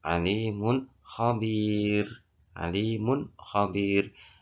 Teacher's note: Kata mun tidak boleh kita dengungkan, tapi kata mun ya bunyi mun, alimun khabir itu harus kita baca dengan jelas karena itu adalah idhar. Nah, bacaan idhar harus dibaca dengan jelas. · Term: idhar halqi